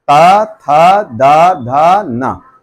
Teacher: फिर नेक्स्ट आता है और बाहर निकलेंगे तो दंत में आएगा जबान आपकी दांत के अंदरूनी पार्ट में टच होगी